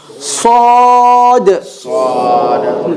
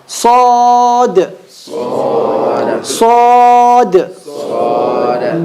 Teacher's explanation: Sad is what? Heavy. And it has a qalqala at the end of it.